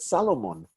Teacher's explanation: Israelis do not call salmon, the fish salmon, S-A-L-M-O-N. They call it Salomon because they don't like having the L and the M come right up against each other without a vowel.